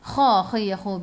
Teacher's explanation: Biar ada angin, biar menggelagak.